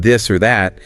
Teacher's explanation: It's voiced so there's more vibration. >> It's quite distinctive.